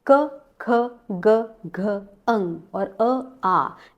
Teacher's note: क वर्ग का उच्चारण स्थान है कंठ, तो कंठ्यः वर्णाः, इसमें स्वर भी आते हैं और व्यंजन भी आते हैं।